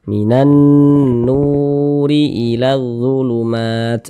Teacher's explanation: nah sebelum wau sukun ini nih ada harakat dah nah sehingga huruf yang memiliki harakat damah ini dibaca panjang sehingganya NU dibaca panjang Mad thobii